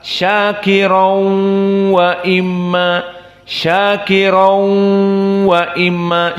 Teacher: tanwinnya di sini masuk kepada wau dalam keadaan gunah makhrajnya dari kisum dari hidung dan dua harakat maka Syakir wa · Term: idgham bighhunah